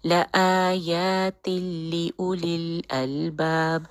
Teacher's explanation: تنوین کا جو نون ساکن ہے وہ اگلے لام میں کمپلیٹ مرج ہو گیا، تو یہاں پہ ہے ادغام بغیر غنہ، تو ہم بالکل غنہ نہیں کریں گے